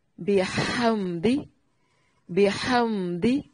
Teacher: میم کو ہلانا نہیں ہے اور یہاں پر میم ساکن کا اظہار ہے، غنہ نہیں کریں گے